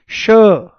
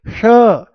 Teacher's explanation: यह मूर्धा से बोला जाता है।